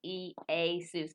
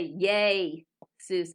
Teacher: this is not a diphthong because it makes two separate sounds